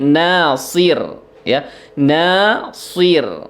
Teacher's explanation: ro-nya tetap tersenyum ya karena huruf tipis